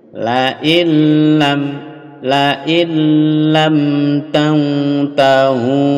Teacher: ini nun lebur ke lam tapi tidak boleh dengung